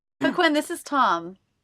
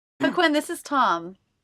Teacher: did you notice how the second syllable of hock when and the syllable tom were the most stress they have that up down shape especially tom which came down in pitch at the end of the sentence